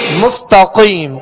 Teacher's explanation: بسم اللہ الحمدللہ رب العالمین الرحمن الرحیم مالک یوم الدین إياك نعبد وإياك نستعين اهدنا الصراط المستقيم مستقیم قاف کو پر پڑھیں گے، تا کو باریک، مس سین کو سختی سے پڑھیں گے، سیٹی کی آواز پیدا ہوگی، تا کو باریک پڑھیں گے، قاف کو پر کریں گے.